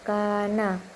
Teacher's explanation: ini ee hukum bacaan hukum tajwidnya itu ee mad th'i karena kaf fathah bertemu alif dan cara bacanya juga dipanjangkan dua harakat